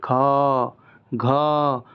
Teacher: महाप्राण व्यंजनों के उच्चारण में हंकार जैसी ध्वनि विशेष रूप से रहती है